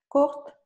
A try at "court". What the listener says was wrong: Merci beaucoup. On ne va pas prononcer le T. Court.